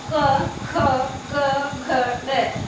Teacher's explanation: कंठ वर्ग में हमारे आते हैं क से लेकर ड तक